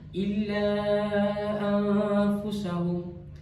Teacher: nun sukun dibaca samar-samar dengan dengungan dan dibaca dengan dua harakat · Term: ikhfa hakiki, ihfa hakiki